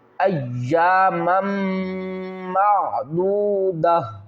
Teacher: میم کو میم کے ساتھ ملائیں گے، میم مشدد ہے، غنہ بھی کریں گے، میم میم دو زبر مم، ایامم معدودہ، وقف کی صورت میں معدودہ پڑھیں گے، اور وصل کی صورت میں ہم کیا کریں گے؟